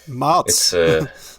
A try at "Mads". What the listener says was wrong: In Danish, the D kind of disappears, but makes the word a little bit shorter.